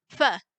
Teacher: you're pronouncing this as a voiceless bilabial fricative. So your mouth should look the same as when you're saying F, but there's just air coming through.